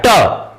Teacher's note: फिर ट बोलिए, मुख से कम वायु निकलता है, ट कम वायु निकलेगा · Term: अल्प प्राण